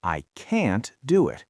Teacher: Because if you want to say the negative form, you have to use the word can't. And can't is always stressed.